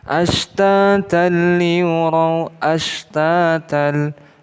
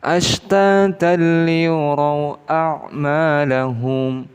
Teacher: Ashtatan liyuraw, ashtatal, ada harokat kasrain bertemu dengan salah satu huruf idgham, yaitu lam, di mana lam ini termasuk huruf idgham bila gunnah, maka cara membacanya tidak boleh kita dengungkan